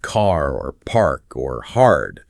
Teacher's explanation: we typically pronounce the R sound after a vowel